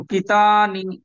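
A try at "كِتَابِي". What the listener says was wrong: কিতা, কিতা, তা টান হবে। আচ্ছা, এখানে দু জায়গা টান হবে। তা এখানে ইয়া আলিফ মাদ্দার জন্য টান হবে, আর এখানটা ইয়া সাকিনের আগে জের এসছে, এখানে ইয়া মাদ্দার জন্য টান হবে, দু জায়গা টান হবে।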